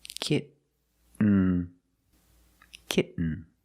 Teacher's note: You don't release, and then you fall to an N, kitten. When you make the stop T, the tongue is up, almost in the N position, so you don't have to change much.